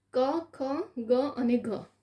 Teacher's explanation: આપણે જ્યારે બોલીએ એનો ઉચ્ચાર કરીએ ત્યારે કંઠમાંથી બોલાય છે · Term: કંઠ્ય